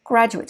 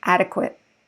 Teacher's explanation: the primary stress is the same but the ate syllable is usually unstressed it sounds like it's like in the word it or hit